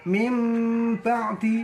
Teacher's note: Suaranya non mati diganti dengan suara mim mati · Nah, nun matinya diganti suara mim. Min ba'di, jadi membacanya mim ba'di. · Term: ikqlab